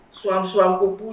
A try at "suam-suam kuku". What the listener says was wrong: Jangan keliru ya. Suam-suam kuku nganggo K, bukan nganggo P.